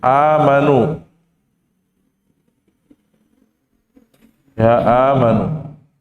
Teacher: Nah, di sini ada huruf nun dhammah ketemu dengan waw maddiyah. Amanu ini kalau kita wasolkan tetap dibaca 2 harokat. Walaupun nanti tergantung huruf setelahnya, ya. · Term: mad tabi'i